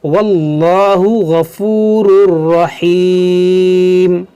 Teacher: اس میں جلالت سے پہلے زبر ہے تو یہ موٹا ہوگا